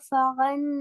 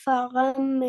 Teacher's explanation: தன்வீனை நாங்க மீமாக மாத்தி ஓதணும்